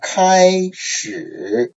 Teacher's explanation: the first tone is the highest tone, and the third tone can be seen as the lowest tone. So 开始, so you can see there's a comparison. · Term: first tone plus third tone